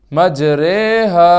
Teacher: امالہ کی را کو اردو کے لفظ قطرے کی را کی طرح پڑھیں، یعنی ری نہیں بلکہ رے پڑھیں۔ امالہ کے ہجے اس طرح کریں: میم جیم زبر مج را کھڑا زیر رے مج رے، ہا الف زبر ہا مج رے ہا۔